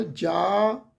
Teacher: ਹੋ ਬਣਾ ਦਿੰਦੇ ਆ ਪਰ ਜਜ ਨੂੰ ਜਿਹੜਾ ਕੰਨਾ ਲੱਗਾ ਹੋਇਆ ਕੰਨੇ ਦੀ ਮਾਤਰਾ ਦੀਰਘ ਮਾਤਰਾ ਵੱਡੀ ਮਾਤਰਾਹ ਤੋ ਇਹਦਾ ਪਾਠ ਜਾ ਇਹਨੂੰ ਲਮਕਾ ਸਕਦੇ